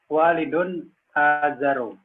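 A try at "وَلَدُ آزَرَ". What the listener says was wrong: Bukan walidun, walad. Waladu azaro. Waladu azaro. Bukan waladun, bukan pakai tanwin. Dalnya didomahkan saja, waladu. Waladu azaro.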